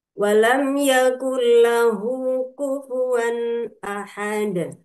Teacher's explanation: Lamnya juga tidak boleh lam, tidak boleh terlalu rapat ya. Kemudian yakun lahu menjadi yakullahu nun sukun melebur ke lam karena lam merupakan salah satu dari huruf idgham bila gunnah